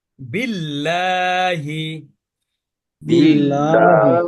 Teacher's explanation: সবগুলো মোটা উচ্চারণ করলাম এবার এই লাইনে আমরা সব পাতলা কারণ আল্লাহ শব্দের পূর্বের অক্ষরে কিন্তু জের শুধুমাত্র জের হলে পাতলা হবে